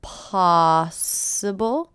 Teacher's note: First syllable is stress.